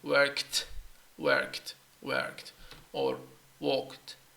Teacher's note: So I'm gonna link it together and just keep everything aspirated from the k to the t.